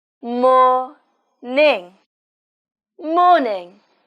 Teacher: The stress on morning is on the first syllable.